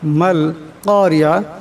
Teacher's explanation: কাপ মোটা আওয়াজে পড়তে হবে, রাকে পাতলা আওয়াজে পড়বেন এবং আইনকে গলা থেকে চাপ দিয়ে বাইর করতে হবে।